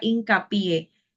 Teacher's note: es aguda porque la sílaba tónica es la última sílaba · aguda porque la sílaba tónica es la última sílaba por ejemplo cuando usted escucha la palabra hincapié la mayor fuerza que hacemos Es en la última sílaba